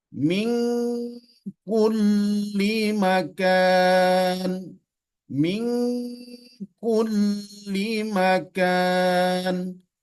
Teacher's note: ketika Nun bertemu dengan qf atau Nun bertemu dengan Kaf dia menimbulkan bunyi Eng